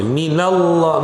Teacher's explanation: Full mouth, because Zabar. Fatha.